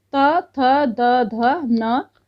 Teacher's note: त से लेके ना तक इनको दंत कहेंगे, दंत से।